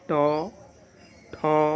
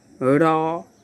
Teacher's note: जैसे उच्चारण करके देखेंगे ट ठ, है ना, जैसे देख लेंगे र, ऊपर से दांत के ऊपर वाले भाग से उच्चारण होता है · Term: मूर्धन्य वर्ण